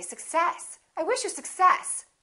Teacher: so in this case we stress the second part and we say success i wish you success we don't say i wish you success